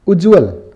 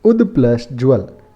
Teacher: उद प्लस ज्वल, तो द का ज में परिवर्तन होना।